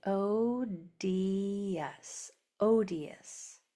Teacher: You hear the U, but you don't hear the O.